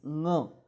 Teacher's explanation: उसको आपको ग बोलना है, लेकिन नाक से, ग जैसा उच्चार है लेकिन नाक से